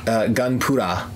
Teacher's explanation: the L and the R sound is kind of merged in the Japanese soundscape